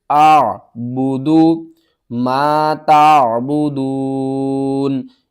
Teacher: حمزہ کے الف کے اوپر زبر آ گئی ہے، حمزہ بن گئی ہے، حمزہ کو ہم نے عین کے ساتھ ملانا ہے اور عین کو آپ نے حلق کے درمیان والے حصے سے ادا کرنا ہے۔ اعبدو ما تعبدون، میم الف زبر ما، الف سے پہلے زبر ہے، حروف مدہ ہے، 1 الف کے برابر آپ نے کھینچ کر پڑھنا ہے۔